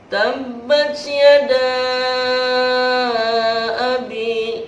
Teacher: mad tabi'i bertemu dengan alif di dalam dua kalimat, maka dikatakan mad jaiz munfasil, panjangnya 5 harokat